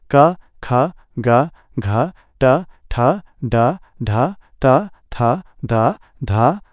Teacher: हवा का पूर्ण अवरोध और फिर झटके से निकलना। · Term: प्लोसिव